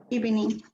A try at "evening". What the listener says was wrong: Evening. I think you said something like evening. You gave it a short E, evening. You'll have to listen to your video later on to see if that's what you said.